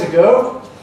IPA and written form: əˈgoː (ago)